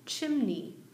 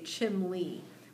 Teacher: chimney with a M and an N sound, chimney. But if you were to ask my parents, what's that brick thing on top of your house, they would say chimney with an L sound